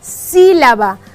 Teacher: Aquí la sílaba tónica es la sí.